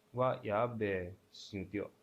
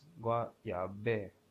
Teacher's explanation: So the running was 2-2, and now the standing is 4-1, which indicates a falling tone, falling sound